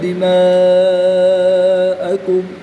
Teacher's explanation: الف مدہ کے بعد حمزہ اسی کلمے میں ہے تو یہاں پر مد متصل ہوگی، یہاں پر 3 سے 5 الف تک کھینچ کر پڑھیں گے